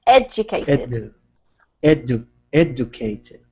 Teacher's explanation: try not to put too much emphasis on the cated and more on the beginning